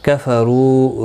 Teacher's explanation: و مدہ ہے، ایک الف کی مقدار کے برابر کھینچ کر پڑھیں گے، پیش کی وجہ سے را پور پڑا جائے گا.